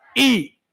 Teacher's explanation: अब बस एक बात आपको याद रखना है, ई के जितने रिश्तेदार हैं, ई वो सब आगे, ई बोलते हैं हम, तुम्हारी जीभ का अगला हिस्सा खड़ा होने लगता है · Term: अग्र स्वर